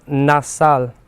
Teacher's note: Y con la nasal, la A se nasaliza porque está enfrente de la N y hace la nasalidad